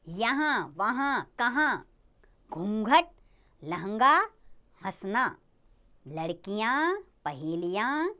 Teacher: इसका उच्चारण नाक और कंठ दोनों से होता है · लेकिन अनुनासिक में अपने ध्यान देना है उच्चारण नाक और गले दोनों से होगा